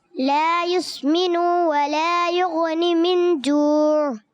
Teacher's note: لا یسمنو یہاں حرکت ہے نون کے اوپر، اس کو لمبا نہیں کریں گے